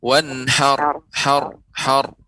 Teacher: kita tahan huruf ro-nya agar tidak terlalu banyak getaran.